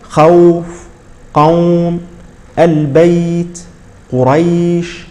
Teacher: هذه الواو ينبغي ان تلفظ بلين بلين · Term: صفه اللين